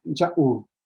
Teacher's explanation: Es la glotal y una vocal larga después.